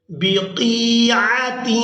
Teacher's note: قاف کو یائے مدہ کے ساتھ ملاتے ہوئے ہم نے کھینچ کر ادا کرنا ہے